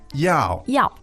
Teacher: same sound and the same tone which is fourth tone